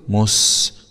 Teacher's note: س سكون مع الصفير